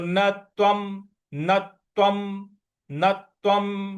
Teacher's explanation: न के बाद जो त्वम का त है उस पर हमको आघात देना है।